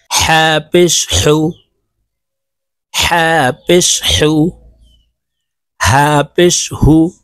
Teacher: হা হরফ হলকের মধ্যখান থেকে উচ্চারণ হবে কারণ হার মাখরাজ হলকের মধ্যখান থেকে হবে